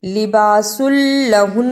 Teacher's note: لباس لہن، ادغام بلا غنہ، رکنے کی صورت میں نون کے اوپر تھوڑی دیر لگانی ہے